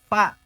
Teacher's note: Fa yang ditempel adalah gigi bawah nempel ke bibir atas, bukan dibalik.